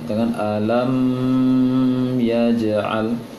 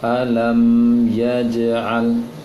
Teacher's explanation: mim sukun bertemu dengan ya, maka juga tidak boleh didengungkan. Alam yaj'al, jangan didengungkan, jangan alam yaj'al, itu keliru.